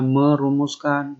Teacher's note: Menasal bertemu dengan kata rumuskan diawali oleh fonem R. N mengalami penghilangan. Jadinya merumuskan. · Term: penghilangan fonem